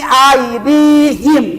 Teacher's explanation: Aidi panjangkan dua harakat.